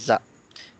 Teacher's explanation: हम अपनी टंग को जो है ना वो आगे की तरफ टच करते हैं, अपने ऊपर तालू पे, टॉप पे जो है हम्म।